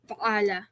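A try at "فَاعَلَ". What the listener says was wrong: Not fa'ala, no. No, look, fa should be long. Fa'ala is the shape, yeah?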